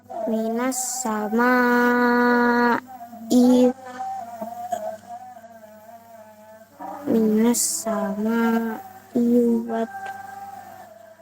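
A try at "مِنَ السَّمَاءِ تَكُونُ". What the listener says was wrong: tanpa wawu. Minas samai takunu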